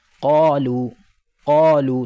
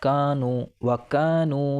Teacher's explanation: تو قاف تو پر ہے اور حلق سے نکلے گا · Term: بڑا قاف